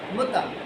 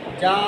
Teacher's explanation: تا زبر تا کو ہم نے لمبا نہیں کیا، جبکہ جیم زبر الف جا کو لمبا کر رہے ہیں